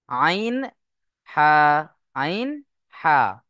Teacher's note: কন্ঠনালীর মাঝখান হতে উচ্চারণ হয় আইন হা